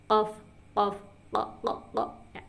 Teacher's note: jadi dia di pangkal lidah dan langit-langit mulut bagian belakang.